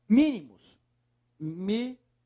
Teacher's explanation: Qual é a sílaba mais forte? É o mi, professor.